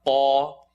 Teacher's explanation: Qaf is heavy behind the uvula